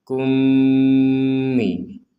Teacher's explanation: maka kita memasukkan mim yang pertama kepada mim yang kedua, sehingga kita membacanya langsung dimasukkan. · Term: dengungan